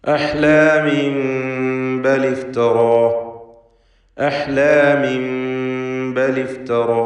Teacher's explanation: ഫലത്തിൽ ഇഖ്ഫാ ഷഫവി എന്ന സാക്കിനത്തായ മീമിന് ബായിന് മുമ്പിൽ വരുമ്പോൾ നൽകുന്ന ഹുക്മാണ് ഇവിടെയും നൽകപ്പെടുക. അപ്പോൾ മീമിൻ്റെ ശബ്ദം അവ്യക്തമായിക്കൊണ്ട് മണിച്ചുകൊണ്ട് ഉച്ചരിക്കണം എന്നർത്ഥം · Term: ഇഖ്ലാബ്